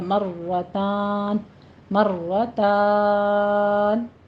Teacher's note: را پر پڑھی جائے گی اور را پر تھوڑا سا تکرار بھی ہوگا